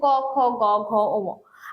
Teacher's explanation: জীভের পিছনের অংশ উঁচু হয়ে আলজীভের কাছাকাছি যে নরম তালু রয়েছে সেখানে কি বায়ুপথে বাধা সৃষ্টি করে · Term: কণ্ঠ ব্যঞ্জন